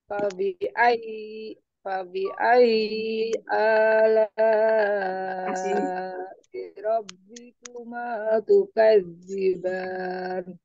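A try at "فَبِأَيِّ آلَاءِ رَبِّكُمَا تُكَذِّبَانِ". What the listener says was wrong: Ay, ketika ay di, diangkat. Ay, diangkat. Ay. Coba sedikit lagi. Fabi ayyi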